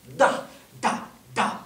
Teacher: elle se prononce en appuyant le bout de la langue sur le dessus des dents d'en haut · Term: la lettre D, La lettre D